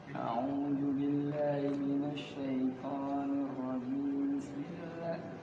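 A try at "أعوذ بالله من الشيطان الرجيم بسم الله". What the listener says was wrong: Nah, mi-nya hilang. Nah, nggak boleh ya kan? Harus sambung. Jadi kalaupun apa nggak usah panjang-panjang kali, ya. Apa nggak usah lambat-lambat kali, kan? Tapi nggak tarik napas orang kita tipin napas pendek kan? A'udzu billahi minasyaitonir rajim. Bismillahirrahmanirrahim.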